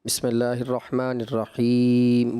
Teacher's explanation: اس میں اوور دراز کر دیا، انہوں نے تھوڑا زیادہ ہی کھینچ دیا۔